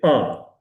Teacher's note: the air passes through the mouth and the nose. That's why it's nasal.